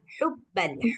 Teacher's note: Pastikan letaknya itu di tengah tenggorokan.